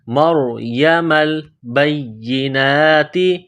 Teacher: میم کو را کے ساتھ ملانا ہے، را کو موٹا کرنا ہے ، مریم البینات، یا کو دبانا ہے، یا میں سختی کرنی